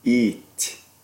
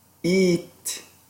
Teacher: the E is a high front unrounded, tense vowel